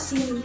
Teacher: posisi lidahnya itu berada di bagian depan yang cukup tinggi di dalam mulut. Bentuk bibirnya sedikit tersenyum.